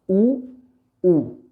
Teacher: जब हम ऊ बोलेंगे तो होठों का आकार जो है हमारा वृत्ताकार हो जाएगा, ऊ। ठीक है, तो होठों का प्रयोग किया गया इन्हें बोलने में, इन्हें उच्चारित करने में।